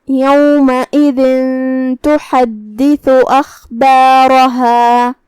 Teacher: را پہ زبر ہے تو اس کا حکم ہے تفخیم · ہم تھا کو زبان کے سر اور اوپر والے دانتوں کے اندرونی کناروں سے ادا کریں گے.